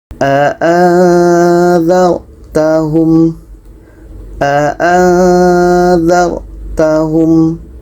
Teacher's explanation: nun mati bertemu dha ikhfa hakiki dibaca dengan samar dan dengung